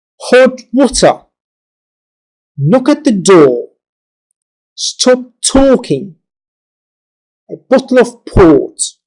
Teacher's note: there are two stresses in each with the first one being minor and the second the major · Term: phrase stresses